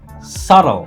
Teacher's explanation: The B is totally silent.